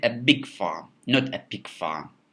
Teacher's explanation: you may um confused between the big and pig and then when we stress big in that case our listeners can hear us better uh and it removes any mishearing or misunderstanding of the two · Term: contrasting function of the stress